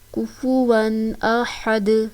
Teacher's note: یہاں پر ہم نے تنوین کو ظاہر کر کے اس لیے پڑھا کہ تنوین کے بعد حروف حلقی میں سے حمزہ آ رہا ہے تو جہاں پر ہم تنوین کو ظاہر کر کے پڑھیں گے، غنہ نہیں کریں گے، اخوا نہیں کریں گے، کفواً نہیں پڑھیں گے، کفواً ظاہر کر کے پڑھیں گے. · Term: اظہار حلقی